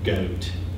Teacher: Young speakers also have a lower goat than older speakers. So they're producing, rather than saying goat with just a front but relatively still mid vowel, they're producing goat. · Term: goat vowel